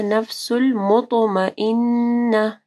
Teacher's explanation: طا کے اوپر کلکلا ہوگا اور طا کو ہیوی پڑھنا ہے۔ مطمئنہ، یہ گولتا جو ہے یہ وقف کے صورت میں ہاں ہو جائے گی۔